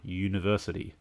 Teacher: university despite starting with a vowel has a sound of the letter y u as in you